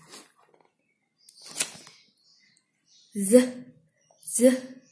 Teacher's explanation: Voice, place of articulation post alveolar and manner of articulation fricative.